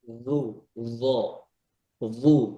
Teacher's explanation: জুন্নু মানে যাই দিয়া হইছে, জিহ্বার আগা, দাঁতের আগায়, উপরের দাঁতের আগায়